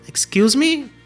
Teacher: excuse me, com a entonação para cima